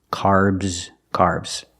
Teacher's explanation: The S makes a Z sound like zebra. Make the vibration. Z, carbs, carbs.